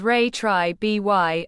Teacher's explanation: Pronounce it as retribution, with the main stress on the third syllable, byoo. It means punishment inflicted on someone as vengeance for a wrong or criminal act.